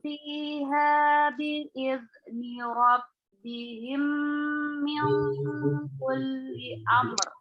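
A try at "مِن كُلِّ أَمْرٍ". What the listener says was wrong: Tipiskan lagi. Min, jangan ada indikasi dia menebal. Min, jangan sampai ada kebengkokan. Min, tapi min keluar dia. Min kulli amr.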